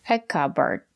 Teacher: the second syllable is not stressed we pronounce it as erd like burger